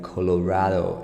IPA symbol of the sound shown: oʊ